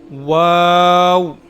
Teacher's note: दोनों होठ बिल्कुल गोल हो जाएंगे। वा मुंह खुलेगा और वापस गोल हो जाएंगे। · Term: वाऊ